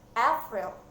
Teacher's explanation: Jadi yang besar dulu, baru yang kecil. Berarti yang ditekan adalah suku kata pertama.